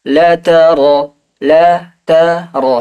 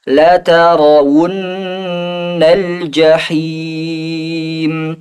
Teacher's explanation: Hati-hati ra-nya tebal, jangan sampai mencucu. Karena tebal bukan dengan bibir mencucu.